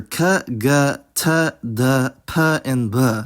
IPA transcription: kʰ gʱ tʰ dʱ pʰ and bʱ